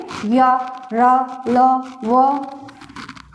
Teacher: इनके उच्चारण में जीभ जबान का जो अगला भाग होता है वो मसूड़ों को टच करता है और इससे हवा निकलती है। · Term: अंतस्था व्यंजन